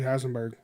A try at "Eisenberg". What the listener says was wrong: Jesse Eisen. Eisen. There's no H.